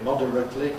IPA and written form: ˈmɒdərətli (moderately)